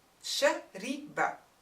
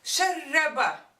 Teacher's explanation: So the kasra of the ra turns to a fatha in Form 2.